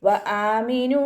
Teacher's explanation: വആമിനു വാവ് ഉച്ചരിക്കുമ്പോൾ ചുണ്ടുകളൊന്ന് വട്ടത്തിൽ പിടിച്ചെടുക്കുക. ഹംസയുടെ കൂടെ അലിഫ് മദ്ദാണ് വന്നിട്ടുള്ളത്, 2 കൗണ്ട് നീട്ടിക്കൊടുക്കുക